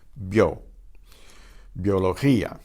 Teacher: bio is a single syllable because that's a diphthong. The I and the O combine into one vowel sound.